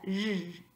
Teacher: And the last one, the Z with the hat, is similar to the S with the hat, but it's voiced. So this is a sound zh, and we see it in English like in the middle of the word pleasure or treasure.